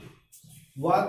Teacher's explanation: व का उच्चारण स्थान दांत और ओठ दोनों है, इसलिए इसको दंतोष्टम, दंतोष्टो वर्ण भी एक कहलाते हैं।